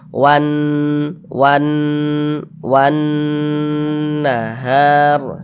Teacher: Tapi yang menjadi fokus perhatian kita itu kalau ada alif, ini alif, sebelum alif ada ini harokat fathah, maka huruf yang memiliki harokat fathah dibaca panjang, sehingga ha dibaca panjang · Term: Mad tabi'i